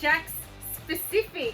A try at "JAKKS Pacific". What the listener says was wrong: It's not JAKKS specifically. This is specifically JAKKS. JAKKS specifically. No, it's JAKKS Pacific.